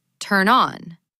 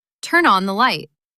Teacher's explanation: Turn and on stick together.